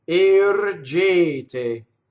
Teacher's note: All 3 of those E's should be equal. They're all A vowel, right? You don't want to say air. Doesn't want to rhyme with hair in English, or chair, right?